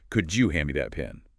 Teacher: The D and Y sounds blend into a J sound.